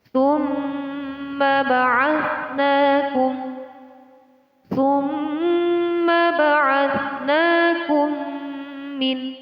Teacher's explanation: mim di sini dinamakan hukum bacaan gunnah. Cara membacanya ditahan kira-kira selama 2 ketukan.